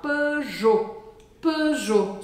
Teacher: E aqui na marca Peugeot, a gente não vai falar o T no final.